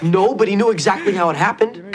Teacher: There was a bit of vocal fry there.